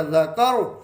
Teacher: را سے پچھلے حرف کے اوپر زبر ہے تو را کو جب ساکن کریں گے تو یہ موٹا پڑھا جائے گا